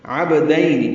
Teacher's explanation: با ساکن پہ قلقلہ ہے